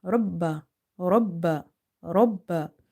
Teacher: Ra is heavy because of having fatha on top of it, and ba is twice, so we have to emphasize. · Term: shadda